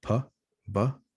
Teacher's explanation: So same point of articulation, bilabial sounds, p and b. They happen here in the lips. That's why they are bilabial.